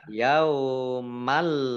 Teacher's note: fathah tanwin bertemu dengan huruf lam, bacaan idgham bila gunnah. Idgham masuk bi dengan la tidak gunnah mendengung.